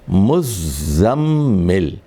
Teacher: ذا جو ہے یہاں مشدد ہے, 2 مرتبہ پڑھنا ہے آپ کو